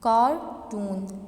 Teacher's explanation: कार ज़्यादा नुमाया है जबकि टून उसकी निस्बत हमने क्या किया, उस पर ज़्यादा स्ट्रेस नहीं दिया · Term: प्राइमरी स्ट्रेस